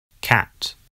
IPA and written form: kæt (cat)